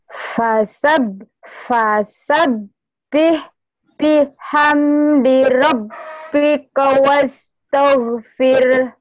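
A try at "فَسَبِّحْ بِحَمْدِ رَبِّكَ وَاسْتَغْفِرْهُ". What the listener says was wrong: Itu jadi tebel tadi. Ayo in. Kok oh, yang salahnya di fir.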